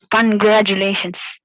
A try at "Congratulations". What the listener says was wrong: I cannot hear the stress. The stress is not highlighted. Just look at the penultimate syllable. Let all the other syllables be in the same tone, but just stress, emphasize on the penultimate syllable.